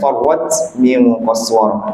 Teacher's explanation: ta yang mati itu hamasnya sedikit